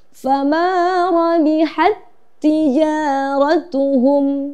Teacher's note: Pada kalimat ini fama rabihat tijaratuhum, kita tidak perlu lagi memberikan hak sifat hamas pada tak sukun karena di sini ada tak lagi berikutnya, sehingga menjadi hukum bacaan idgham mutamasilain yang mewajibkan kita untuk meleburkan bacaan.